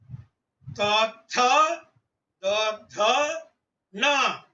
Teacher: Here na pronouncing, you have to fold your tongue.